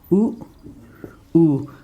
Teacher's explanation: ओठ मेरे क्रिया कर रहा है, आगे आ रहा है